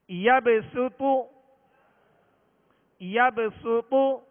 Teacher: تو کو پر پڑھیں گے اور شروع میں سین کو باریک کریں گے. یبسطو، یبسطو، پیش کے لیے ہونٹوں کو کامل گول کریں گے.